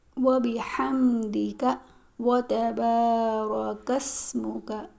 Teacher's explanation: یہ کاف موٹا نہیں پڑھتے ہیں، بلکہ زبان کی جڑ کو تالو کے سخت حصے سے لگا کر کاف ادا کریں گے اور کاف باریک ادا کریں گے۔ وَبِحَمْدِكَ وَتَبَارَكَ اسْمُكَ، یہ کاف بالکل موٹا نہیں پڑھیں گے۔